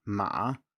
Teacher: usually in context pronounced just as a low tone, without the dip, i.e. without the rise at the end there